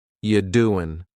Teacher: The word you is reduced to ya. You doing, listen to that G at the end. You doing, it's gone.